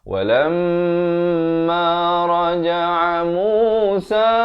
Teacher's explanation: Raja'a di pertengahan kerongkong